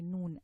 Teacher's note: Noon is pronounced by pressing the tip of the tongue against the hard palate, just behind the 2 front incisors. Okay, and that produces a noon. · A ghunna, which is the characteristic of the noon, comes through the nasal passage as well to complete the sound.